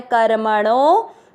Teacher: आपको णो की मात्रा को लंबा खींचना है।